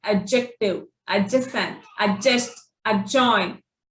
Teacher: that D will remain silent. You can only hear the J sound.